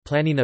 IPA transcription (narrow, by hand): ˈpɫanina